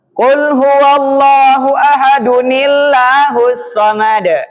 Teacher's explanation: Kalau yang itu domah tanwin ahadu ahadun. Maka dihilangkan tanwinnya, harakatnya berubah jadi doma biasa diturunkan nunnya. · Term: nun wiqayah